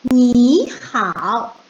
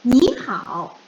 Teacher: we will change the first third tone. We will pronounce it very quickly. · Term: third tone and third tone